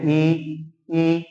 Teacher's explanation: इसमें जीवा का जो अगला भाग होता है वह अधिक ऊंचाई पर उठ जाता है · जैसे देखिए, अपन बोलते हैं ई, तो यानी कि जिह्वा का अगला भाग पूरा ऊपर उठ गया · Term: संवृत स्वर, समृद्ध स्वर